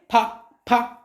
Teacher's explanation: होंठ चले हमारे, होंठ गोल हुए हैं, फा फा हो रहा है ना। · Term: ओष्ठ वर्ण